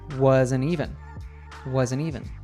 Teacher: because the following word, even, starts with a vowel sound, it gets naturally linked to the N sound from wasn't.